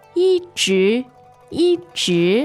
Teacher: the tones on 一 直 are kind of interesting. It's First and second.